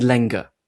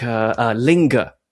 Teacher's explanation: It's being raised up to become I. It's going from E to I when it comes before a nasal sound. So a word like linger is originally lenger.